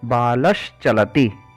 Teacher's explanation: चा और छा का जो उच्चारण स्थान है वही उच्चारण स्थान तालव्य शा का है।